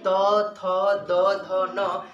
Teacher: त थ द ध न, इस पांचों को दांत से बोला जाता है,